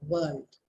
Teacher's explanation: you round your lips when you have to say the word world